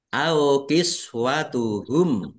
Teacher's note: mim sukun bertemu dengan huruf alif. Bacaan izhar syafawi dibaca jelas. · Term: izhar safawi